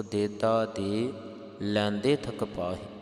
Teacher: ਲੈਂਦੇ ਦੇ ਉਪਰ ਹਲਕੀ ਜਿਹੀ ਆਵਾਜ ਆ ਜਾਵੇ ਬਿੰਦੀ ਦੀ